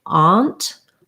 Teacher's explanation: Some people on the East Coast, maybe in the South, a few other places will say aunt. Yeah, so they use the ah vowel, and it looks more like this, aunt.